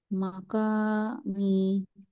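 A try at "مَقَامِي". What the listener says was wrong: কফ heavy letter, আবার বলো।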